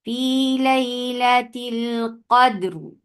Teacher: را ہیوی ہو جائے گا کیونکہ را کو ہم نے سکون دیا. اس سے پہلے والے لیٹر کے اوپر بھی سکون ہے اور اس سے پہلے والے لیٹر کے اوپر آپ کو فتحہ دکھی، تو فتحہ کی وجہ سے را ہیوی ہو گیا.